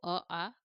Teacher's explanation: अ का उच्चार स्थान जो है कंठ आ का उचार स्थान कंठ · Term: कंठ वर्ण